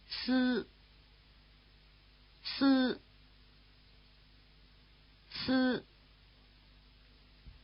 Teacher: If you move the tongue back a bit from the E position, keeping the lips spread, you'll have this I vowel.